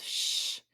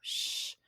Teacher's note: Our SH sound says shh, and that's considered a fricative because you're blowing air the whole time that you make that sound. So shh.